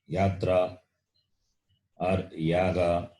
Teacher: Like in the word yatra or yaga or yajna or in the word yamini, this ya is the letter, the sound of the letter ya is there. And its ucharanam is palatal. Its sound is palatal. The tongue touches the palate.